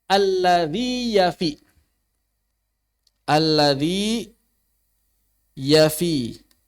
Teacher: Yang pertama adalah ya Mad vokal yang kedua adalah ya Lin konsonan maka dua huruf yang berbeda hakikatnya namun secara rasem tulisannya sama